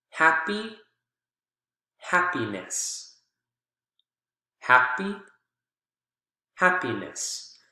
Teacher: You can see the strong syllable is still the first one in both of these.